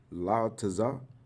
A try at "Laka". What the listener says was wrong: That's not a taza. That's la. Remember that ending character on the end, cause it's long stem. Long stem R is a ka.